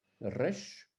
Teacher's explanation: Le resh, roulé à l'italienne